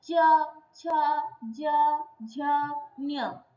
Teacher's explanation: च तालु में टंग लग रहा है, इसलिए इसको तालव्य वर्ण कहते हैं।